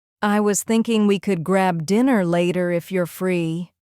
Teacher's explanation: The voice rises slightly at later and then falls at free. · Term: rise and fall